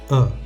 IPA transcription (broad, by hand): ə